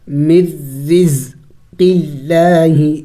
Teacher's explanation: را کے نیچے جب زیر ہو تو را کو باریک کر کے پڑھی جائے گی، یعنی اس کو موٹی نہیں پڑھیں گے